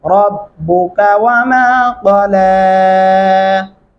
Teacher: रब्बुका रा को मोटा और पुर करके पढ़ेंगे